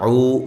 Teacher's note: یخادعون اللہ، یہاں عو و مدہ ہے، عو اس کو بھی ایک الف کے برابر لمبا کرنا ہے